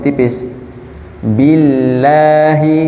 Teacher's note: di sini dia kasrah jadi tipis billahi tidak tebal